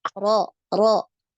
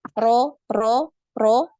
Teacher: yang tebal itu pangkal lidahnya naik ya Ini naik kemudian yang tipis itu tidak naik pangkal lidahnya jadi yang membedakan itu ya ketika mengucapkan huruf ro yang tebal